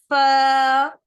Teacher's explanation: इसके बाद हम आते हैं फा लेटर पर। नीचे वाले लिप्स जो है हमारे ऊपर वाले दांत से कनेक्ट होगा और हम पढ़ेंगे फ, ठीक है।